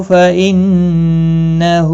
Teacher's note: فَإِنَّهُ نون مشدد پر گنہ ہوگا ، ہا کے اوپر الٹا پیش ہے، ایک الف کی مقدار